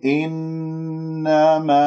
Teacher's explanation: نون مشددة، الغنة أكمل ما تكون ولا أنبرها واكسر الهمزة، إنما نحن، نحن، الحاء رقيقة، لا تخرج كمية هواء